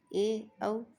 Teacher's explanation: तीसरा है अर्धसंवृत, जिन स्वरों के उच्चारण में मुख द्वार आधा बंद रहता है